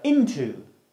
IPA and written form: 'ɪntʊ (into)